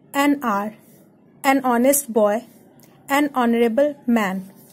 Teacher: no doubt it doesn't start with the vowel, but it has the sound O. H is silent. So wherever the H is silent and you find the sound of vowel, so you have to always use an. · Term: silent H